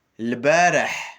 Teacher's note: À la fin, il y a un H qui est expiré dans la gorge d'une façon aiguë